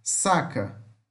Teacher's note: o s fricativo alveolar surda